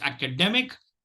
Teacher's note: The primary stress is on the 3rd syllable, and the secondary stress is on the 1st syllable.